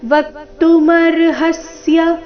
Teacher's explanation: ವಕ್ತುವ ಮೇಲೆ ಆಘಾತ ಬರಬೇಕು